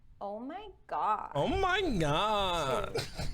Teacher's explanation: use creaky voice. This means to lower your pitch and really vibrate your vocal cords.